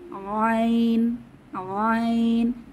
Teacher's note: আইনের মাখরাজ কণ্ঠনালীর মধ্যভাগ থেকে কণ্ঠনালীর মধ্যভাগ থেকে বাতাসকে চেপে আইন